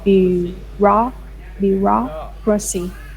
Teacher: a lot of syllables in this word like for bureaucracy and they put a stress on the second syllable